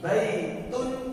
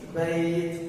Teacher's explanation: Ketika waqaf dia tidak dibaca. Kembali ke kondisi asal kata tersebut yang tidak ada nunnya.